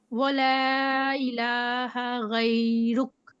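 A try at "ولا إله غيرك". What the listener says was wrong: ولا. اچھا، یا کچھ کھینچنا نہیں ہے ہم نے. غیرک. آپ نے صرف غیر غیر رخ کہیں اور باقی نہیں کہیں. ٹھیک ہے، آپ نے اس کو غی نہیں کرنا. ٹھیک ہے، آپ کا نا یہ یا لمبا ہو رہا تھا.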